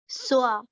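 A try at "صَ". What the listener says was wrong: Try and make that sound that goes straight up. There shouldn't be a hint of a W or a vowel sound.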